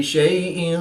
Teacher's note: یا ساکن سے پہلے شین پر زبر ہے تو یا لین اس کو لمبا نہیں کریں گے. دو زیر کی تنوین کے بعد قاف حروف اخفا میں سے ہے تو یہاں پر اخفا ہوگا یعنی غنہ زمانی کر کے پڑھیں گے